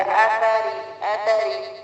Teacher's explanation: را کو جلد اور را باریک کیونکہ زیر ہے